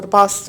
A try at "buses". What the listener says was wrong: There's less need for maybe buses. Again, the B, you need to pronounce that more clearly. There's less need for buses or public transportation on campus.